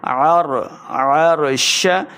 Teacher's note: عین کا مخرج ہے حلق کے درمیان والے حصے سے